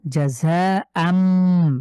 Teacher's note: এখানে তানভিনের পরে বা দেখতে পাচ্ছি, সুতরাং আমরা এটাকে মিম দ্বারা পরিবর্তন করে পড়বো, জাযাআম। এখানে আম, বাংলার যে আম আছে ম্যাঙ্গো আম, তো আম পড়ছি, কিন্তু রয়েছে তো আন, তো এই আনটাকে আমরা মিম দ্বারা পরিবর্তন করে পড়লাম, এটাই নিয়ম।